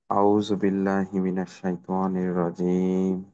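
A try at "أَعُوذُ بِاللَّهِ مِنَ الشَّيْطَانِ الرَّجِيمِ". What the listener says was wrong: আচ্ছা, আউযু ক্ষেত্রে আউযু কিন্তু টান হয়। আউযু, আউযু বিল্লাহ।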